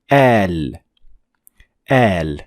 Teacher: pronounce alif, but a little bit longer than usual. So al. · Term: med